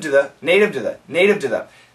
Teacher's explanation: You don't hear two, it sounds more like a d, very short d sound.